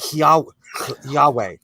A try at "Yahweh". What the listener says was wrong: I don't think you're even supposed to pronounce the H. I think it's more like Yahweh.